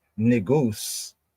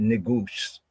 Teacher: It's like a slur that makes the S sound more like a sh